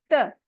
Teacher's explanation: जबान को फ्लैट करके और टिप को ऊपर के दांतों की जड़ से टच करके पढ़ेंगे तो अदा होगा त। त, त में हमारी जबान बिल्कुल फ्लैट है।